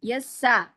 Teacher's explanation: सीन को बारीक रखें